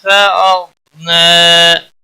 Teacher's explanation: غائن پر قلقلہ نہیں ہونا چاہیے، غائن کو موٹا بھی پڑھنا ہے، نا کے اوپر کھڑی زبر ہے ایک الف کے برابر کھینچ کر پڑھیں گے.